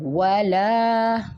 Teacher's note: یہ الف مدہ بن رہا ہے، اس کو ہم نے کھینچ کے پڑھنا ہوتا ہے